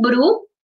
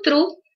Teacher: É o bru, que é a vibração de lábio, e o tru, vibração de língua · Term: sons vibrantes